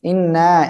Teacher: ওয়াজিব গুন্না হবে আর তিন আলিফ টান হবে